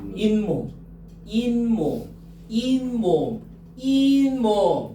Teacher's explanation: 갑자기 니은 소리가 덧나지 않습니까?